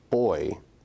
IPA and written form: bɔɪ (boy)